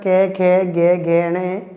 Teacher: ये जो वर्ण होते हैं ये वर्ण हमारे कंठ से उच्चारित होते हैं। इन कंठ से उच्चारित होने वाले वर्णों को हम क्या है कांठ्य वर्ण भी कहते हैं।